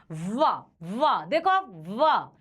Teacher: ये दांत और होंठ टच हो रहा है,